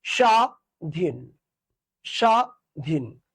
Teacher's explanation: দেখো, পদের বা শব্দের আদিতে যদি ব ফলা উচ্চারিত হয় না, কি বলছে আদিতে, আদিতে, আদি মানে কি, আদি মানে হচ্ছে শুরু, অর্থাৎ শব্দের শুরুতে যে বটা ফলা থাকবে সেটা উচ্চারণ হবে না।